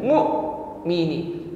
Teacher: hamzah sukun syiddah, tertahan bunyi hurufnya, bukan mu'mini tapi mu'mini, tertutup dengan sempurna sehingga suaranya putus di situ.